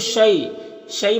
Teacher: یا ساکن سے پہلے شین کو پر زبر ہے تو یالین ہوگا، اسے نرم آواز کے ساتھ جلد پڑھیں گے